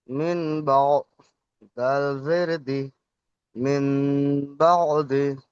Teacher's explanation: নুন সাকিনকে মিমের দ্বারা পরিবর্তন করে এক আলিফ পরিমাণ গুন্নাহ করে পড়তে হবে।